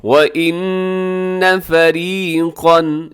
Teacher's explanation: واو پہ ہونٹ گول کیجیے گا، نون مشدد ہے، یہاں غنہ آپ نے کرنا ہے